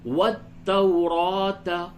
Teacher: را کو کھڑا زبر کو تھوڑا سا پر کر کے پڑھیں گے اور کھینچ کے بھی